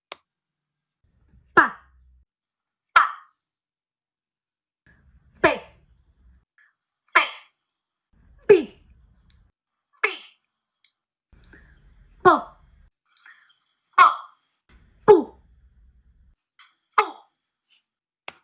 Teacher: juntamos los labios, detenemos el escape de aire o el flujo de aire y luego al abrirlos liberamos ese flujo como una explosión. Ahora, si ustedes quieren sentir el flujo de aire, pueden colocar su mano frente a la boca y sentir este aire que sale. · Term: sonido P